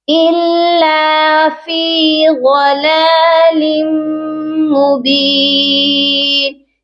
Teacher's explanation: لام کو جب ہم نے میم مشدد کے ساتھ ملانا ہے تو غنہ بھی ہوگا اور ملا کر بھی پڑھیں گے. یہ قاعدہ ہوگا ادغام مع الغنہ کا.